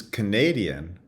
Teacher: Canadian where the stress shifts onto the second syllable and the first syllable now now has the schah Canadian you